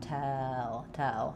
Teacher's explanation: So the main difference between these two vowels is that L is going to be a little bit more open, and it's not going to glide. It's going to be flat. Tell. So it's very central.